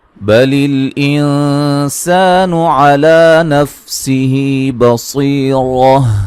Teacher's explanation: بل نون ساکن کا باریک اخفا ہے، علی لا مد اصلی ہے، نفسه ہی مد اصلی ہے، بصی صاد کو موٹا ادا کریں گے، یا مدہ ہے، را کو موٹا ادا کریں گے، وقفاً گولتا کو ہائی ساکنہ میں تبدیل کر دیں گے.